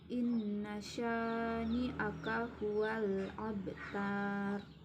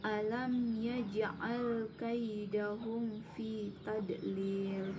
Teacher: qalqalah sugro dibaca dengan mantap dan memantul